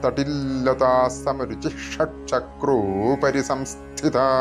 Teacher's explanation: ഷ ഒന്ന് സ്ട്രെസ്സ് ചെയ്തുകൊണ്ട് കുറച്ചൊന്ന് ദിത്വമാക്കികൊണ്ടിട്ടാണ് ഷ ഉച്ചരിക്കേണ്ടത്